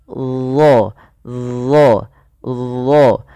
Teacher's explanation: Yang dimana isti'la itu berkenaan dengan posisi lidah kita, yaitu pangkal lidah kita angkat ke langit-langit agar menempel, ya, supaya menebalkan huruf huruf dha ini. Nah, ujung lidah ketika melafalkan huruf dha itu kita tempelkan dengan gigi seri atas kita. Dha, ujung lidahnya nempel.